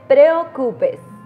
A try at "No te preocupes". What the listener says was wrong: Preocupes. Sin pronunciar tan fuerte la R.